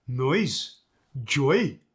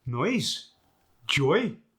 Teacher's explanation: Words where there's two vowels together and then you rise on the second vowel. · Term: internal vowel lilt